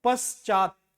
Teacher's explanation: सबसे ज्यादा जोर लग रहा है च क्योंकि च में आ की मात्रा लगी है और त का उच्चारण पूरा ना होने के कारण यहां पर हलंत लगा है।